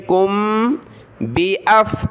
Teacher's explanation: मीम साकिन के बाद बा है तो यहाँ नाक में आवाज़ पैदा करेंगे